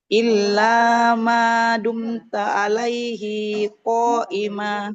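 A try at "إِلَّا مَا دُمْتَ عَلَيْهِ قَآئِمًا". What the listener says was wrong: Haknya enggak panjang. Betul. Untuk bacanya ini sedikit, untuk panjang pendeknya Ibu hati-hati ya.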